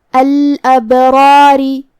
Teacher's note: ہم را کو اور مد الف کو دونوں کو بھاری آواز میں ادا کریں گے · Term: تفخیم